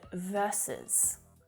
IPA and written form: ˈvɜrsəs (Versus)